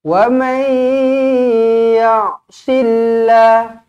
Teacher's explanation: Lafzul jalalah dibaca dengan nipis. Sebab apa? Huruf sebelumnya berbaris bawah. Bukan syullah, tetapi silla.